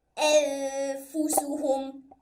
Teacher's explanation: So, watch me how I am going to make my Ghunna. So, I first set my tongue on the place where there is Fa's makhraj. And then after that, I say the sound of Noon.